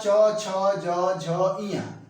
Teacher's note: ये च, छ, ज, झ, इया में क्या होता है कि जो जीभ होती है वह नरम तालु के बीच में जाकर स्पर्श करने लगती है, इसलिए इसका नाम जो है कि तालव्य पड़ा।